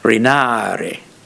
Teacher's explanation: When you lengthen the vowel, you get a falling tone on it